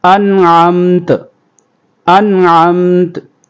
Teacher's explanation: اظہار کریں گے، غنہ نہیں کریں گے، غننے کے بغیر جلدی پڑھیں گے۔ انعمت، وقف کریں گے تو وقف کی صورت میں انعمت، انعمت۔